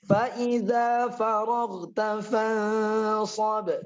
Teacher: nun sukun bertemu dengan sa hukumnya ikhfa hakiki. Ba-nya qalqalah kubra.